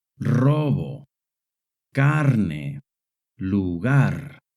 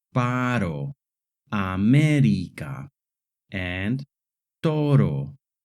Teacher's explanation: The letter R in Spanish makes two distinct sounds. The rolling R sound, like in the words robo, carne, lugar, and the short tap R sound, like in the words paro, América, and toro. When the letter R is at the beginning of a word, it always makes the rolling R sound.